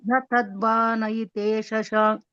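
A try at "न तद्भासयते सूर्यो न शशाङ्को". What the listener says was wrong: నా తద్భాసయతే తద్భాసయతే అది సా మాతాజీ అది నా కాదు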